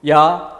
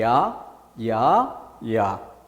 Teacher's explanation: 아까는 입모양이 변하지 않았는데 지금 입모양이 변화하죠. 입모양이 변화하는 것을 한 번의 소리가 났다라고 하지 않고 2번의 소리가 났다라고 보는 거죠. 이것을 이중모음이라고 하는 것입니다.